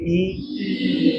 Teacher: But it is not close, mouth is not close. ई बोलिए, ई बहुत कम जगह बची है, हार्ड पैलेट और हमारे टंग के बीच में जगह जो है वो बहुत कम बची है · ई is a vowel during the articulation of which the front of the tongue, ये फ्रंट पार्ट है, front of the tongue is raised up to the close line, up to the close line, but not, it is not completely close, ये भी लिख दीजिए।